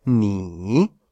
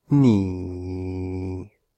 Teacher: Es decir, un tercer tono que en lugar de dibujar, subiremos un poco esto hacia aquí, en lugar de dibujar esta línea descendiente-ascendiente, mantiene una línea descendiente inicial y baja durante todo el resto del tono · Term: tercer tono bajo